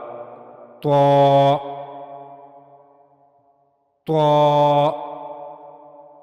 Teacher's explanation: زبان کی نوک کا اوپر والا حصہ جب اوپر کے اگلے 2 دانتوں کے پیچھے کے مسوڑے سے جا کر ملے گا تو وہاں سے طا ادا ہوگا۔ طا کی ادائیگی میں اس بات کا خیال رہے کہ طا اور تا یہ سننے میں دونوں ایک جیسے ہیں، لیکن ان میں فرق ہے۔